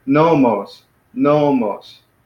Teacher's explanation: Here we got 2 syllables, nomos, but the accent is on the first syllable, so it's nomos, nomos.